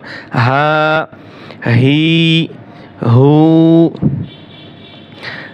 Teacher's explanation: খাড়া জবর, খাড়া জের, উল্টা পেশকে এক আলিফ লম্বা করে পড়তে হয়। তা খাড়া জবর, খাড়া জের, উল্টা পেশ যদি হয় তাহলে আমরা এক আলিফ পরিমাণ লম্বা করে টেনে পড়ব। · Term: এক আলিফ টান